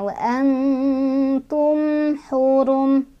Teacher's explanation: jadi ini nun sama ta-nya makhrajnya dekat ya, wa an, jadi enggak terlalu ang ya, wa an masih ada nn-nya, wa antum hurum. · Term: ikhfa aqrab